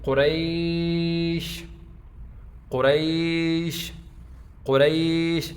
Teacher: یہ یا ساکن ہے، اس سے پہلے جو ہے یہ زبر ہے، یہ حروف لین میں سے ہے، اس کو ہم نرمی کے ساتھ پڑھیں گے۔